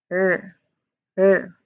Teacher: So it is then followed by a clear R sound, R or R sound, made with the tip of your tongue, curled slightly back